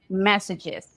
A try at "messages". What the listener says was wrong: Good. What is that last sound in messages?